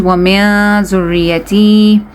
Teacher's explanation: we're going to be hiding the sound of this noon into the nose. Wa min dhurriyati, it's not going to be wa min.